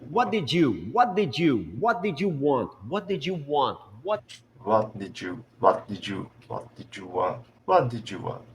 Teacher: Da frase original, what did you want? Vai ter um som agora puxado para o J.